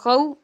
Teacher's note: اور یہاں پر پھر میں آپ کو بتا دوں، یہاں پر نون ساکن کے بعد خا ہے، یہاں بھی اظہار ہے اور یہاں پر واو ساکن سے پہلے زبر ہے، واو لین ہوگا، اس کو بغیر جھٹکا دیے نرمی کے ساتھ معروف پڑھیں گے